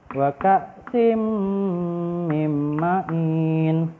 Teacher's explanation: suara tanwin tidak terdengar suara nun sukun pun tidak terdengar langsung melebur ke huruf mim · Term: idgham